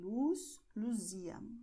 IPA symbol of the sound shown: z